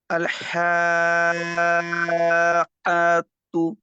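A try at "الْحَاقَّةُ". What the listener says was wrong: আয়াতু না, কতু, আল হাক্কাতু।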